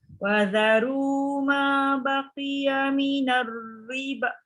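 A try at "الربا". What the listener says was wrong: Minar riba. Tapi riba tu 4 atau 5 harakat. Paling kurang 4. Panjang tu.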